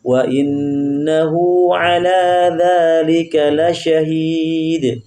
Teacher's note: Nah, sekarang hu-nya sama dha-nya panjang.